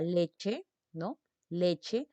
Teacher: la sílaba le es la sílaba tónica